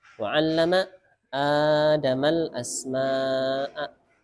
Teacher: Asma'a satu kata, 4 sampai 5 harakat.